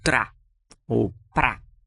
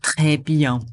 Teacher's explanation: o som do R é sempre aqui da garganta